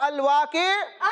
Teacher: گول تا وقف کی حالت میں ہاں سے بدل جاتی ہے